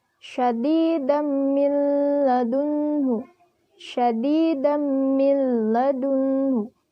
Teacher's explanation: Nah, ini merupakan idgham bila gunnah karena huruf nun sukun bertemu huruf lam bertanda tasydid. Dibaca lebur tanpa dengung dan bunyi tanwinnya hilang.